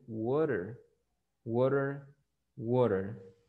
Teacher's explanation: la T está en medio de dos vocales, entonces la pronuncia como una R